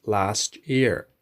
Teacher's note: If a word ends with a t sound and the next word starts with a y sound, in the middle we make a ch sound